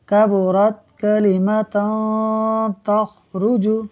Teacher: ناظرین دو تا پر دو زبر کی تنوین ہے، اور دو زبر کی تنوین کے بعد آگے تا حروف اخفاء میں سے ہے، لہٰذا غنہ ہوگا، یعنی ناک میں آواز لے جا کر ہم پڑھیں گے